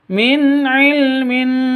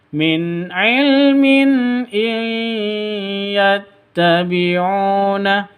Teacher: harakatnya izharzhar izhar izhar halq Kenapa tanwin bertemu dengan HAM Hamzah jelas terang tidak boleh dengung tidak boleh panjang min ilmin itu salah yang betul Min ilminattabiuna begitu nun mati